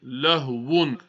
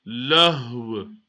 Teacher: So instead of reading lahwun, so we stop, we read lahw. So the two harakat, they vanish.